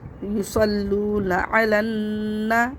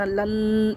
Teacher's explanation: نون کو دوبارہ پڑھیں گے، نون زبر نا، اور اس پہ غنہ بھی کریں گے. یصلون علن، یہ دیکھیں غنہ لن، یہ غنہ کی آواز ہے.